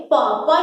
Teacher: पा जब बोलते हैं तो हमारे ओष्ठ आपस में टकराते हैं, तब ये उच्चारण होते हैं। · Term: पा वर्ग